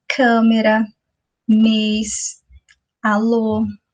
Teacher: as vogais, elas são pronunciadas com a boca quase fechada, ou seja, com um tom mais fraco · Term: som é fechado